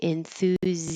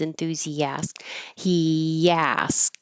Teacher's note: I'm moving my tongue from a high position to a lower position as I keep making voicing and that's where the Y comes from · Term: intrusive y